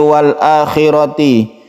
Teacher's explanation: alnya tidak dibaca, langsungkan ke sukun lam.